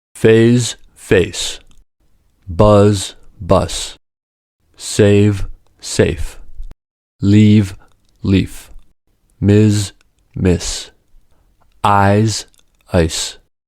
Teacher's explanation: two words differ only in the voicing of the ending sound. One is voiced and the other is not voiced. For this reason, they differ in vowel length.